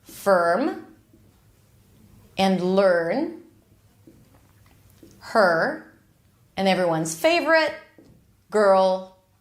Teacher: okay basically it's like you're taking the schwas sound uh and you're bringing the back of the tongue up a bit to create that R tension to make the r basically the sides of the tongue touch the insides of the upper teeth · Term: r as in stir